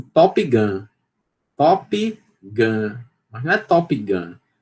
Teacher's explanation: uma oclusiva alveolar desvozeada e aspirada